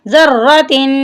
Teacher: ذال کو را کے ساتھ ملانا ہے، را کے اوپر شد ہے تو اس کو ہم سختی سے پڑھیں گے، را کو، ذَرَّةٍ خَيْرًا يَرَهُ، خَيْرًا يَرَهُ۔